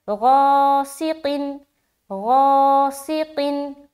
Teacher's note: سین کے نیچے زیر کی حرکت ہے، زیر کو جلدی پڑھیں تھوڑا بھی نہ کھینچے، معروف پڑھیں مجہول آواز سے بچیں، جیسے غاسقن۔ قاف کے نیچے دو زیر کی تنوین ہے، تنوین اور نون ساکن کی آواز یکساں ہوتی ہے